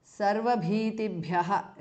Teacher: Sarvabhitibhyaha is a compound word. Both the bhas are mahapranaha.